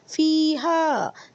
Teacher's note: فی کو لمبا کریں گے یا مدہ کی وجہ سے، اور ہا کو لمبا کریں گے الف مدہ کی وجہ سے.